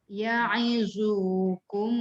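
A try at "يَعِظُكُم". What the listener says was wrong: Tapi jangan panjang.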